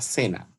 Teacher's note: tiene acento que recae en la primera sílaba